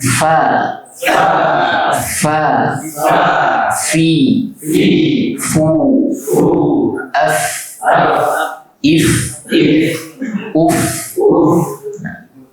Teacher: Berarti ujung gigi seri atas dibenturkan dengan perut bibir bagian bawah, keluar huruf fa.